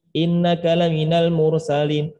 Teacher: inna itu nun tasdid itu sempurna dengungnya tahan lamaan